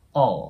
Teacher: 最初の母音の部分は、あと▁o▁の中間を伸ばすイメージ 、all▁って感じですね。で、最後の▁L、またダーク▁L▁なんで、歯の裏側ぐらいに舌を押し当てて、all、こんな感じになります。なので、ルーにならないですね。all▁the▁になります。で、このね、舌の▁L▁の動きを活かしたまま、そのまま▁the▁の音に移動します。th▁ですね。all▁the▁と発音すると、綺麗に発音しやすくなると思います。で、その後、students▁なんですけど、これね、よくts▁ってなると発音されない方が多いん